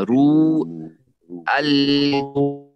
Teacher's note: اور رو یعنی ہونٹوں کو گول کر کے چھوڑنا ہے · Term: واو مدہ